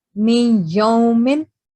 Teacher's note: So you can see over here that you're going to read mim as me, and then after that, there is noon sakin and ya mushaddad. So you're going to make a nasal sound